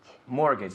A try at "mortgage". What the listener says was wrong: La T no se pronuncia.